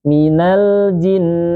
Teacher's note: ada tasydid, nun bertasydid, maka ditahan. Minal jin, gunnahnya ditahan.